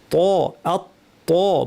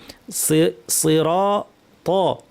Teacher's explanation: ত হরফটাও কিন্তু ভারী। তরফুল লিসান, শীর্ষ থেকে একটু ভিতরের অংশ, এটাকে উপরে দাঁতের গোড়ায় লাগিয়ে ত ত বলতে হবে